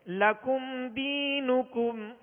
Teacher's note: میم ساکن کے بعد حرف دال ہے، قاعدہ کون سا لگے گا؟ اظہار شفوی، غنہ نہیں کریں گے